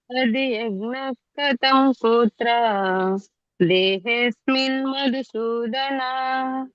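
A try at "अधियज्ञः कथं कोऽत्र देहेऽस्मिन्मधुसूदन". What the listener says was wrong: ಸರಿ ಬಂತು ಹರೇ ಕೃಷ್ಣ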